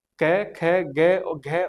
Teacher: ये हमारे मुख विवर में जो कंठ होता है वहां से जो है ध्वनि निकलती है। इसलिए इनका उच्चारण स्थान कंठ होता है और इनको कंठ ध्वनियां कही जाती है।